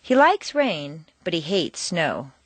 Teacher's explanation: like and hate are contrasted and are the stronger words in the sentence